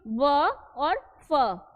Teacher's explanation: व फ उच्चारित करते समय हमारा जो होठ है, होठ का निचला हिस्सा जो है वो ऊपर के दांत के द्वारा जो है उच्चारित हो रहा है। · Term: दंतोष्ठ व्यंजन